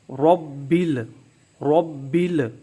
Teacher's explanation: تو را کو پر پڑھیں گے، موٹا پڑھیں گے، با پر تیسرے درجے کا قلقلہ کریں گے، اور با کے نیچے جو زیر ہے، کسرہ ہے، اس کو معروف پڑھیں گے۔